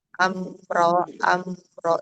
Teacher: Ya, izhar syafawi. Tapi walaupun dia dibaca jelas tadi ee tetap ada sedikit gunahnya ya. Karena dia termasuk ee tingkatan yang ketiga ya naqisah ya.